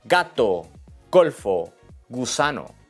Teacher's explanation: La letra G es un poco más difícil. Con las vocales abiertas, A, O, U, es fuerte. Suena como la G en go o game. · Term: G fuerte